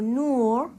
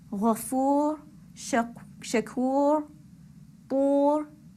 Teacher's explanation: when we have ra with sukoon and it's preceded by the long vowel of a dhamma, for example, nur, again the ra is heavy. Nur is heavy because the ra sakin is preceded by the long vowel of dhamma.